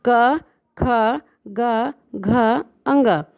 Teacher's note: जो क वर्ग की जो सीरीज़ होती है उसे कंठ से बोला जाता है।